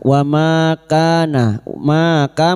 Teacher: Wama kana ma ka masing-masing dua harakat kita panjangkan. Ma fathah diguti alif.